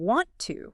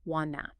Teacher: You stop hearing want to as two slow words and start catching the connected sound, wanna.